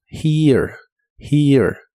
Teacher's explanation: la primera e suena como una i larga que termina con e suave. Y la e del final no se pronuncia.